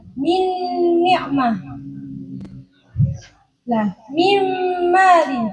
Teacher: Nah, kalau itu idgham kamil, makhraj dan sifatnya nun itu kan masuk secara keseluruhan kepada huruf yang kedua. Makhrajnya nun itu kan di ujung lidah.